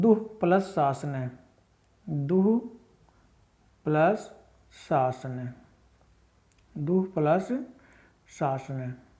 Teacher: ठीक है, जैसे आपका पहला उदाहरण है दुह प्लस शासन, दुह प्लस शासन, दुह प्लस शासन, तो यहाँ पर विसर्गों के बाद क्या आया है, ये वाला तालु वाला स आया है, तो विसर्गों का यहाँ पर क्या बन जाएगा, यही स, या तो विसर्गें इसी प्रकार रहेंगी, या तो विसर्गें विसर्गों में ही रहेंगी, या फिर इनका बन जाएगा स।